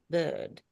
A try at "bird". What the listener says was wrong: Bud. No, not bird, because that you're saying the same thing, but just taking the R out. It becomes like the darling buds of May. Bud, bud, bud, right? You're basically saying an sound with a little stretched ending.